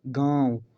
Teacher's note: नाक से कम और मुख से ज़्यादा वायु निकल रही है। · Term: अनुनासिक